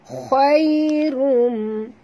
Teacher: Hu khairun, okey, huruf kha kena baca tebal, jangan baca khai, tapi baca khai, khai tebal ya. Khairum, ya sifatnya lin lembut, jadi walaupun tebal tetapi lembut ya.